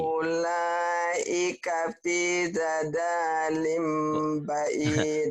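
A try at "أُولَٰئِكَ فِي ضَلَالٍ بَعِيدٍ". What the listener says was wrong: Bukan dadalim. Fi dolalim ya. Donya satu. Fi dolalim.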